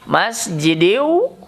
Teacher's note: tanwin bertemu wawu masjidin menjadi masjidiu, itu idgham atau dilebur. Bigunnah dengan menggunakan gunnah.